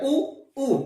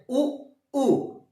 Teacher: उ उ देखो गोल हो रहे, मुंह गोल हो रहा है, लेकिन सीधे आवाज गले से बाहर आ रही, जीभ में कोई चेंजेस नहीं आ रहे। उ उ तो सीधे गले से आवाज बाहर, न पहले हिस्से का प्रयोग न मध्य हिस्से का, सीधे कंठ का प्रयोग, इसलिए उ और उ भी जो है वो पश्च स्वर में आएंगे।